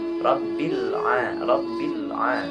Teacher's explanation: dalam pengucapan huruf ba, tidak terdengar huruf mim ataupun ada sebagian huruf fa, tidak ada.